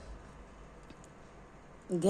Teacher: घ का उच्चारण स्थान हमारा कंठ है।